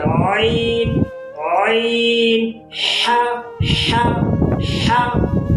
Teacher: عین اور ح ادا ہوتے ہیں وسط حلق سے، گلے کے درمیان سے، گلے کے بیچ والے حصے سے